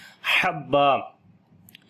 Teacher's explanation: ہا کو گلے کے درمیان والے حصے سے پڑھیں گے